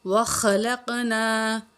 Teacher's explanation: خا کو موٹا کر کے پڑھیں گے, قاف کو بھی موٹا کر کے پڑھیں گے